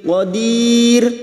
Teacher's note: Qadir bertemunya mat dengan huruf hidup yang dibaca waqaf mad arid li sukun. Ro kita baca tipis karena didahului kasrah dan dibaca waqaf